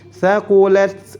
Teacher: huruf ta memiliki sifat hams dan sifat syiddah. Syiddah tertahannya suara, thaqulat kemudian dialirkan nafas.